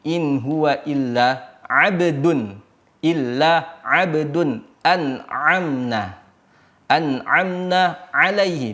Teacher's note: Hamzah itu di bawah atau aqsal halq dibaca di bawahnya daripada huruf ain